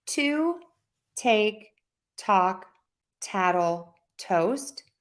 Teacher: We're going to use an aspirated T sound at the beginning of a word